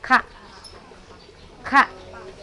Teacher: Pangkal lidah. Di pangkal lidah masuk sedikit.